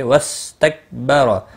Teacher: با اور را کو زبر کی وجہ سے پر پڑھا جائے گا، اور وقف کی صورت میں ساکن پڑھا جائے گا، اس صورت میں بھی پر پڑھا جائے گا۔